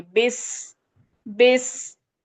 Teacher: सीन जो है सीटी वाला लेटर है। इसको पढ़ते टाइम कुछ सीटी जैसी आवाज निकलती है। · سین جو ہے سیٹی والا لیٹر ہے، اس کو پڑھتے ٹائم کچھ سیٹی جیسی آواز نکلتی ہے